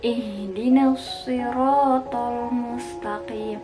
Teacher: Jangan membaca H itu gitu di dada, jangan. Tapi H itu makhrajnya ada di tenggorokan paling bawah. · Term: huruf H-nya